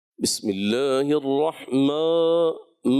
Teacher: ما موٹا رکھنا ہے، مطلب الف کو جو ہے نا آپ نے گرانا نہیں بالکل